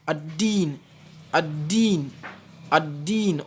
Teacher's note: Ad-din, on n'entend pas, on passe directement au niveau de la lettre dal et avec shadda. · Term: lam solaire